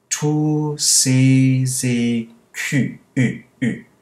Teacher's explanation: Notice the shape of my lips there, very pursed, to get that really small sound.